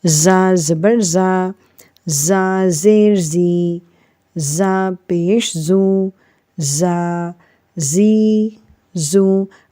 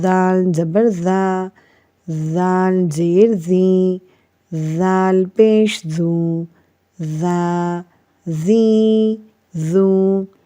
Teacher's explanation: اب زا جو ہے اس میں سیٹی بجتی ہے، لیکن اس کے بعد اب دیکھیں یہ ذال ہے، ذال، اس میں سیٹی نہیں بجتی۔